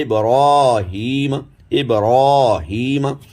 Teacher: ابراہیم یہ بھی موٹا ہوگا کیونکہ را پر کھڑا زبر آ گیا